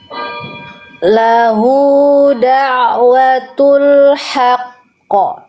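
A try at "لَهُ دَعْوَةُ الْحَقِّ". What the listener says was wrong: Nah, itu banget ya.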